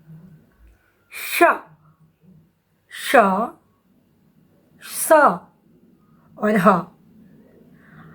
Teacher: तालव्य श के उच्चारण में जीभ जो है वो तालु से स्पर्श करती है। मूर्धन्य श के उच्चारण में जीभ मूर्धा से स्पर्श करती है और दंत स के उच्चारण में जीभ दांत से स्पर्श करती है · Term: ऊष्म व्यंजन